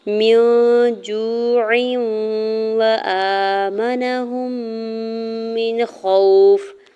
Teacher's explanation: میم کی زیر کو نون ساکن کے ساتھ ملاتے ہوئے اخفا کریں گے · واو ساکن سے پہلے جیم کے اوپر پیش ہے، واو مدہ ہو رہا ہے، 2 حرکت کھینچ کے ادا کریں گے